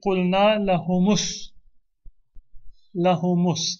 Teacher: We'll give a dhamma to the meme to make it easier to pronounce, and then we will drop the hamza.